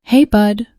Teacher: It clipped slightly at the edges, like it was underwater, but the tone was right. The casual affection, the subtle breathiness before the second syllable.